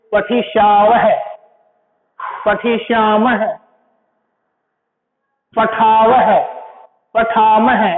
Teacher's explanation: जो ये विसर्ग हैं इनका हकार के रूप में, इनकी जो ध्वनि होती है हकार के रूप में प्रयोग होती है। जैसे पठिष्याव है, पठिष्याम है, पठाव है, पठाम है, ऐसे यानी इनका उच्चारण स्थान जो होता है वो कंठ, ये विसर्ग कंठ से बोले जाते हैं।